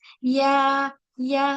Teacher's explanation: जो जबान का जो बीच वाला हिस्सा है वो भी तालु की तरफ उठेगा